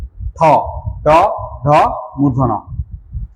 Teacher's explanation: দেখো জিহ্বাটা উল্টে গিয়ে কোথায় লাগছে তালু লাগছে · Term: মূর্ধন্য